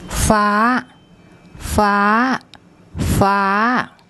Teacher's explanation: this is a low-class consonant and we have the second tone mark and the tone rule for that combination is a high tone